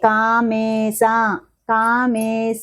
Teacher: మే అన్నప్పుడు మకారానికి ఏత్వ దీర్ఘం వచ్చింది